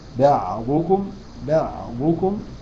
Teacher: بعضكم الدعم كتبلنا خص ضغط ما فيهاش العين ولا فيها الباء انما فيها الضاد والضاد مكسوره فتبقى اقل درجات التفخيم